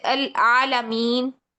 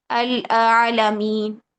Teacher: عالمین میں یہ لام ہے نا، حالانکہ زبر کے ساتھ ہے، پھر بھی ہم اس لام کو باریک پڑھیں گے کیونکہ تمام لام باریک پڑھے جاتے ہیں سوائے اس میں جلالہ کے.